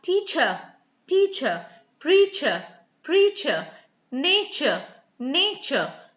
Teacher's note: So the British do not, even the Australians to an extent, do not roll their tongues unlike the Americans. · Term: schwa sound